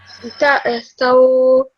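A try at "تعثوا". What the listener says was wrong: Okay, that's actually a ayn, not a hamza. That make a ayn sound, please. Ta'arthaw. Ta'arthaw. Open your mouth for the sa. For the sa.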